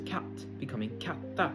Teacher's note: some words gain an a sound in their final syllable